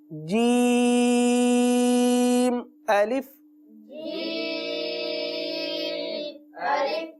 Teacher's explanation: जबान का पेट और तालू का दरमियाना हिस्सा ये दोनों आपस में लगेंगे और जीम का मखरज अदा होगा